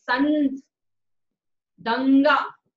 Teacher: नाक से अधिक हवा निकलेगी। संत, दंगा, ये मैंने वही वर्ड्स ले रखे हैं यहाँ पर जिनसे मैंने खुद प्रोनाउंस किया तो मुझे लगा कि हाँ इनमें ज्यादा प्रेशर निकल रहा है नाक से। · संस्कृत में से बिंदु के माध्यम से हम दर्शाते हैं। अनुस्वार के उच्चारण के समय नाक में अपेक्षाकृत अधिक कंपन होता है। जब अधिक कंपन होता है तो वो अनुस्वार है, और जब कम कंपन होता है तो उसे हम बोलते हैं अनुनासिक।